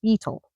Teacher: You emphasize the first syllable, not the last. So, it's beetle, not beetle.